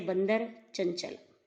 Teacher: अनुस्वार में हवा केवल नाक से निकलती है